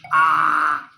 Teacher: विवृत स्वर में मुंह पूरा खुल रहा है, जितना मैक्सिमम खुल सकता है।